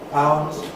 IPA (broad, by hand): paʊnz